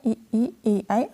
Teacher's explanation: जिन स्वरों के उच्चारण में जीभ का अग्र भाग यूज़ किया जाता है, ठीक है। आगे का जो भाग है वह इस्तेमाल होता है। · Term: अग्र स्वर